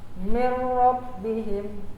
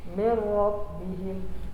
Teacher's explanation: Yang tanwin, yang nun bertemu dengan huruf ro, salah satu huruf idgham bila gunnah. Jadi nun mati ini langsung dimasukkan ke ro tanpa dengung.